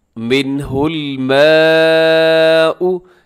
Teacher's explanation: منہ میں نون ساکن کی بعد ہا ہے تو یہاں پر اظہار ہوگا، یعنی غنہ نہیں ہوگا